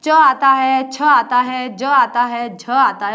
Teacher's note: ताल से जो स्पर्श होंगे उसे कहते हैं च वर्ग